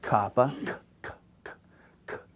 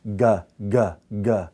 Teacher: One is unvoiced, the other is voiced. One I have very little vibration in vocal cords, the other one I have a lot of vibration in vocal cords.